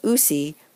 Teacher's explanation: we smash out the consonants and lengthen the vowel sound into a diphthong